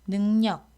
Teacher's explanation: 리을이 앞에 오는 이응 뒤에서 니은으로 바뀌었죠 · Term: 리을의 비음화